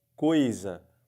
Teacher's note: você percebe que a palavra fica igualzinho tapando ou não o nariz porque porque não sai som pelo nariz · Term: ditongo oral